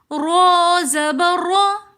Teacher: را کے اوپر زبر ہے تو اس لیے اس را کو ہم موٹا کر کے پڑھیں گے۔ را زبر را، را کے اوپر جب بھی زبر یہ پیش ہوگا تو را کو ہم موٹا پڑھیں گے، اگر زیر ہوگا تو ہم را کو باریک پڑھیں گے۔